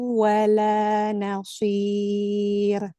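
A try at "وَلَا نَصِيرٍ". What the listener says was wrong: Kasih tajam lagi di sod. Wala nasir. Yang si itu ada di tengah lidah. hanya apa celah sempit. Nah, antara gigi atas sama gigi bawah aja. Nasir.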